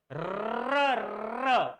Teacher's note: वरच्या भागाला स्पर्श होतो म्हणून त्याला मूर्धन्य वर्ण असं म्हणतात